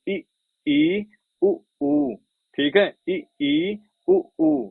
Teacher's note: अगर समृद्ध की बात करूं, समृद्ध क्या है? तो मुख द्वार का लगभग बंद होना